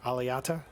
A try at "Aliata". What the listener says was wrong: The T is silent.